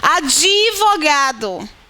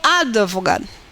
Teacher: Em Portugal, eles pronunciam advogado. Esse D é quase que puxado, né, pela vogal anterior.